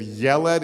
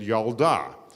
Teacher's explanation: there were a bunch of words in Hebrew that when you make them feminine the e sound changes to an ah